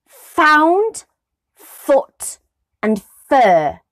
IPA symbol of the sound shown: f